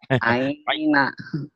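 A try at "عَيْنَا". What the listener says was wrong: Aina belum keluar, gak apa-apa.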